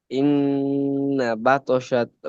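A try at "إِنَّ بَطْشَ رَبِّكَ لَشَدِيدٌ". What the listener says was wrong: বাতশাতা না, শুধু বাতশা।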